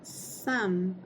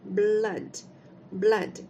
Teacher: apesar de ser escrito com a letra O a gente vai falar um som curto da letra U